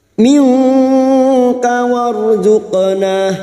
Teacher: Nun sukun bertemu kaf karena kita membaca wasal atau terus. Nun sukun bertemu kaf ikhfa hakiki, kita samarkan bunyi nun sukun dan mendengung selama 3 harokat.